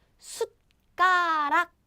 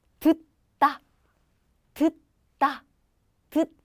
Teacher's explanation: It's more like you stop the breath. But tongue position is exactly the same as when you pronounce the T sound